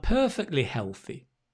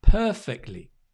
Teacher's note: the t sound kind of drops when we say perfectly